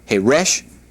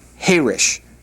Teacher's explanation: the word Heresh with the accent on the last syllable means deaf, whereas the word Heresh with the accent on the first syllable means quiet. So Heresh, Herish.